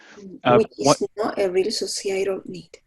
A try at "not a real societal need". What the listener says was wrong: Hit the last T a little bit harder. Often it sounds like not a real societal need. We want that not a real societal need.